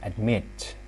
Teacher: So we stress admit. The mit is stressed.